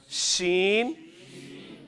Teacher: شین لگ رہا ہے تالو کے ساتھ زبان کے درمیان